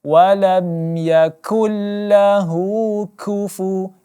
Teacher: kaf di sini berangin, sifatnya ada angin.